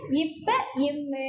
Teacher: இப்பு இம்ு மேலுதலும் கீழுதலும் பொருந்துவதால் நமக்கு என்ன வருது இப்பு இம்மு அப்படின்னு சொல்லிட்டு வருது.